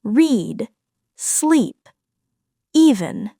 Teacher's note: The long e vowel sound as in read, sleep, even. This is the long tense e vowel sound. The tongue is high and forward and the sound lasts longer. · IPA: /iː/